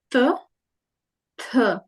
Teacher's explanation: we have unaspirated and aspirated sounds one after the other